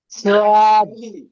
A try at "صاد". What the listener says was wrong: সদ, আর একটু বেশি করে টান দিয়ে বলেন। আরো একটু টান দেবেন, 3 আলিফ টান দিয়ে পড়তে হবে। সদ।